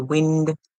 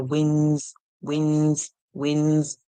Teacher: So we hear wind, but when we add the S, we hear winds, winds, winds. So you're not going to hear the D sound.